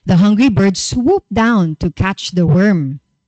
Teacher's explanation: It's represented by the letters ED. ED here indicates past tense, and the ED here is sounded out with the T sound